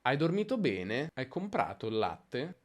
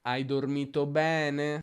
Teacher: sull'accento di frase il tono si abbassa invece di alzarsi.